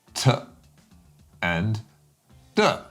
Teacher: So you can feel we're moving into the mouth now, and we're using the tip or blade of your tongue to stop the air by pressing up against that little gummy ridge just above your two front teeth.